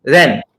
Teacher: the point is that there is air going out from between the teeth and the tongue continuously